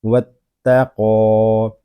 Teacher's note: قاف حروف مستعلیہ میں سے ہے، اس کو پر پڑھیں گے